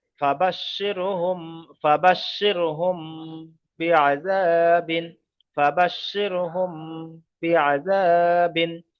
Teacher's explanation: কায়দা হলো মিম সাকিনের পরে বা এসছে, তাই মিম সাকিনকে একালিপ পরিমাণ গুণনা করে পড়তে হবে, একে ইকফায়ে সাফাবি বলা হয়।